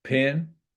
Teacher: The eh sound becoming an I, so pen, pin.